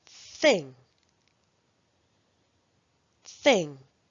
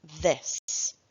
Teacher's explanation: There are two different th sounds, voiceless and voiced.